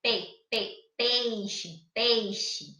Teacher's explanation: o E, ele é pronunciado de uma forma mais forte, né? Então, ele é vogal. E o I vai ser pronunciado de uma forma mais fraca. Então, ele é o chamado semivogal, tá? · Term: ditongo decrescente